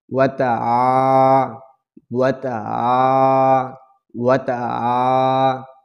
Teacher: প্রিয় বন্ধুরা, এই জবরের বাম পাশে খালি আলিফ, এই জায়গায় আইনটা আমরা হলকের মাঝখান দিয়ে চাপ দিয়ে চিকন করে পড়ব